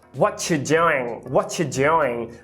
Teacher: Perceba que o you reduz para o famoso schwa